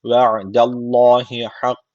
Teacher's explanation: Allah lafzı burada kalın okunması gerekiyor. Çünkü öncesindeki harf üstten bağlanmış.